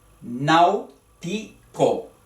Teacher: Nau es una sola sílaba con el diptongo AU.